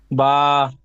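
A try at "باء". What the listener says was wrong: হুম, একটু টানেন দেন একটু, বা বা।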